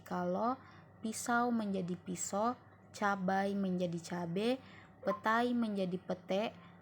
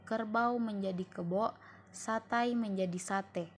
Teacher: perubahan dua bunyi vokal atau vokal rangkap atau diftong menjadi vokal tunggal monofton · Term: monoftonisasi